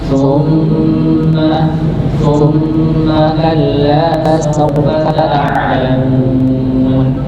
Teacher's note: Kita menemukan huruf mim yang bertasydid, bertasydid, maka dibaca gunnah dengan level amal, ya dengan maksimal bacanya sempurna.